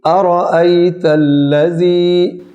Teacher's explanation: الذی میں جو زال ہے اس پر سیٹی نہیں آنی چاہیے